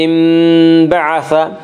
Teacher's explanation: اس کا قاعدہ ہے کہ نون ساکن اور تنوین کے بعد اگر با آئے تو وہاں پہ قلب ہوگا، یعنی نون ساکن اور تنوین کو میم سے بدل کر غنہ کے ساتھ پڑھیں گے.